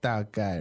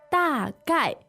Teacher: Yes, 大 概, 2 fourth tones